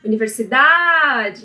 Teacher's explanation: A sílaba tônica de universidade é a penúltima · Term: paroxítona